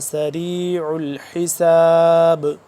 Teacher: آخر میں یہاں پہ قلقلہ ہو رہا ہے